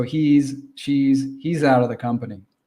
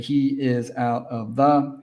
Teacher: remember to always say he is, he's or she's, pronounce that Z sound